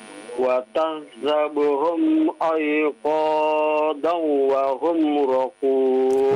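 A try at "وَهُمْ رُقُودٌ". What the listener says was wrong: Wa hum ruqud. Ru bukan ra ya. Ulang lagi.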